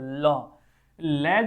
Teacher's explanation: हवा जिसके बोलने से ल ल जब हम बोलते हैं तो जो हवा है वह जीभ के बगल से निकल जाती है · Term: पार्श्विक, पार्श्विक ध्वनि